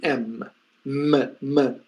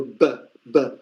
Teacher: to say m also it happens with a difference that uh you are using your nasal cavity your nose as well to produce M but still you have the lips uh there that needs there